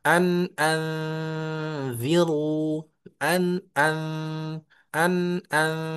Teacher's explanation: ini kan ikhfa hakiki. Jadi nunnya masuk ke zal ya. Ke ikfa samar menyerupa atau siap-siap masuk ke huruf setelahnya.